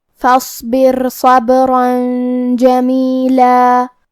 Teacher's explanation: کلمت فاصبر یہاں الف ہے لیکن یہ حمزہ وصل ہے تو ہم حمزہ ظاہر نہیں کریں گے. فا کے بعد حرف الصاد پڑھیں گے. · صاد حروف التفخیم میں سے ہے تو ہمیں یہ حرف کو موٹی آواز میں پڑھنا ہے. آخری میں یہاں را ساکن ہے. یہاں را کا حکم ہے ترقیق